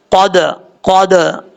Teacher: دال جو ہے ساکن ہے، اب یہاں پہ آپ نے قلقلہ کرنا ہے ، کیونکہ حروف قلقلہ میں سے حروف قلقلہ ساکن ہو تب